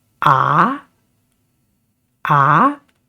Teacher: the second tone is uphill tone. When you make this sound, you got to start low and go high